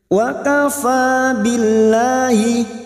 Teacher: lam jalalah yang sebelumnya kasroh kita baca tarkik atau tipis